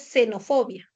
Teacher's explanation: la fricativa alveolar sorda que puede ser representada por la letra S o por la letra X cuando está en inicio de palabra